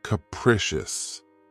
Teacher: This word has 3 syllables, and the stress is on the second syllable. Keep in mind that the first syllable has that schwa sound.